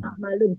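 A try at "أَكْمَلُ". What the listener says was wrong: Anak akmalu. Kenapa tidak akmalun? Ini kan fiil bukan isim. Nggak ada fiil yang bertanwin. Iya, jadi tidak ada fiil yang bertanwin.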